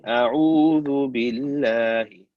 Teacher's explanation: The reason lam here is the empty mouth is because there's a ba with the kasra before the word Allah. Hence, it is empty mouth.